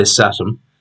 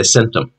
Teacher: The word began with a palatal, which amongst some peoples became a sibilant, while others remained an occlusive.